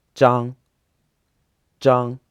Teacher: their surname is pronounced in the first tone